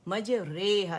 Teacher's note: کیا آپ لوگوں نے یاد رکھنا ہے کہ سورہ ہود کی یہ آیت نمبر 41 میں بسم اللہ مجریہا و مرساہا ایک لفظ ہے, اور اس میں جو مجریہا ہے اس کی جو را ہے کہ اس کی فتح کو کسرہ کی طرف اور الف کو یا کی طرف مائل کر کے ہم اسے پڑھیں گے, یعنی رے, قطرے, بارش کے جو قطرے والی ہے نا رے, اس کی طرف ہم نے پڑھیں, مجریہا, ٹھیک ہے, مجریہا, نہ راہا نہ ریہا, ریہا پڑھیں گے. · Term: امالہ کبرا